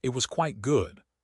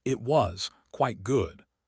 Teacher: If the voice goes up, it was quite good. High energy, they liked it. If the voice goes flat or dou, it was quite good.